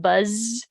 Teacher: Um, and so voicing is the the easiest way to detect it is like if you put your fingers on your neck and you say like a Z sound like in buzz, you can kind of feel your throat vibrating